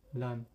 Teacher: You can hear that the vocals are vibrating. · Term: apparent